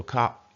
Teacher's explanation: I usually just go cop and leave that R out